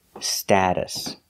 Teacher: We're using the short A sound like apple and black cat, sta, status.